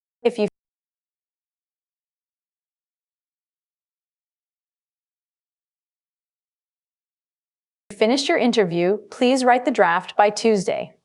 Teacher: This is a conditional sentence, so pause slightly after the first chunk if you finish. Ensure you clearly pronounce the deadline by Tuesday with a falling intonation to mark the end of the thought.